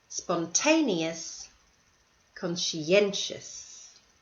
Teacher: these are multi-syllable words and the stress is on the second last syllable